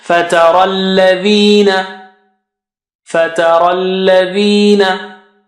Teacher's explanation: Ra is thick. And after ra you have ya and alif, so we don't pronounce them because they have no signs on them.